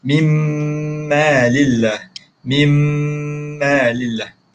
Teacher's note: Dia tak ada bunyi min dah. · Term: dengung